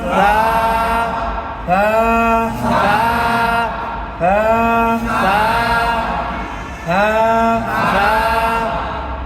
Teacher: নরম করে পড়তে হয়। উচ্চারণ জিহ্বার আগা উপরের দাঁতের আগা। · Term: সা অক্ষর